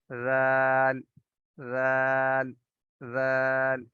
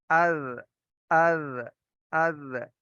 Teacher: زبان کی نوک کو آپ کو ہلکا سا باہر نکالنا ہوگا اور پھیلا کر اوپر والے دونوں دانتوں کے کناروں سے نرمی سے لگائیں گے تو ذال کی ادائیگی بالکل ٹھیک ہوگی۔